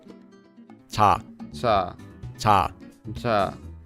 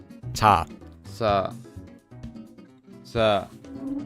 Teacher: C or j sound and it's not a hard j sound like in the word job. It's between ch and j and is a bit softer.